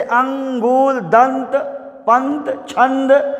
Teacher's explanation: अनुस्वार जो होता है, जो बिंदु केवल होता है, यह नाक से केवल बोला जाता है।